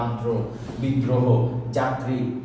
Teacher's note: তোমরা দেখে নিবে তারপর হচ্ছে তোমার যে রফলা থাকলে কি হয় রফলা থাকলে যার সাথে থাকে তাকে দুইবার উচ্চারণ করতে হয়